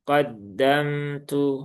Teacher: Kemudian qaddamtu di sini ada mim sukun ya. Mim sukun juga dia punya sifat tawasub maka jangan dibaca dengan syiddah. Ini salah satu peringatan bagi para pembaca Al-Qur'an adalah membaca huruf-huruf sukun itu dengan berlebihan.